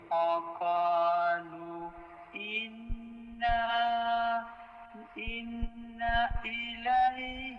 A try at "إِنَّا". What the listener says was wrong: ইন্নার মধ্যে, এই ইন্নার মধ্যে টান দিবেন না। ইন্না